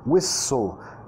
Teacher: acentuando la primera sílaba